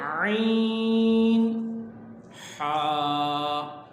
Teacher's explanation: یہ حلق کے درمیان والے حصے سے ادا ہوتے ہیں۔ اب عین اور حا اس کو جب ادا کریں گے آپ تو آپ محسوس کریں گے کہ حلق کا جو درمیانی حصہ ہے، جہاں تھوڑی ہڈی بڑی ہوئی ہوتی ہے، وہاں پہ اگر آپ انگلی رکھیں تو وہاں سے یہ آواز نکل رہی ہوگی۔